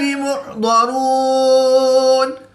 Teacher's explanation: واو مدہ کے بعد نون کی زبر کو وقف کی حالت میں ساکن کر کے پڑھیں گے تو یہاں پر مد عارض ہوگی، 2 سے 3 الف تک کھینچ کر پڑھیں گے